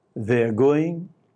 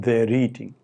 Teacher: If the next word begins with a vowel, then the r is kept, as in they're eating.